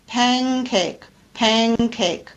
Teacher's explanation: that it's spelled p a n c a k e but I pronounce it with the verer consonant n instead of the alve consonant n because it's closer to the position where K is produced K remember is a verer consonant so I say pancake pancake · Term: velar consonant ng